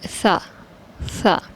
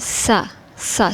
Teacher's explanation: بہت سے لوگ اس طرح پڑھتے ہیں سا سا، سین کی آواز نکالتے ہیں